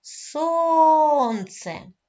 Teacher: наголос падає на склад сон